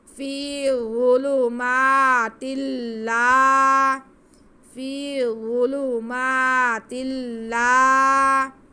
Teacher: الف سے پہلے زبر اس لیے یہ الف مدہ ہے، اس کو کھینچیں گے